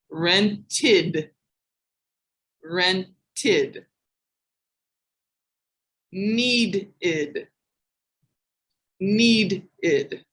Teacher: The id sound has a full syllable, like a D or a T sound ending before the ED.